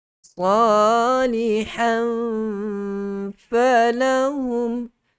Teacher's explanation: gigi kacip bahagian atas dah sentuh kedua bibir, perut bibir bahagian bawah. Salihan falahum, kan kita terus sebut huruf fa, terus senang sebut huruf fa. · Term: makhraj fa